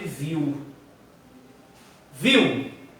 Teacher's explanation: O I é mais forte, então o I vai ser vogal e o U vai ser semivogal.